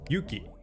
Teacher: 'yuki' has two kana, so it has two moras of length